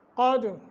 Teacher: قد قاف کو موٹا دال پہ قلقلہ کرنا ہے